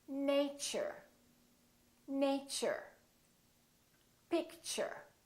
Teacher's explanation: So the T and U create a new sound, and it sounds kind of like ch.